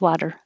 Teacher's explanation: it's very fast but it doesn't sound like a t so if you make a d it's it sounds the same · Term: flap